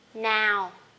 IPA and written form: naʊ (now)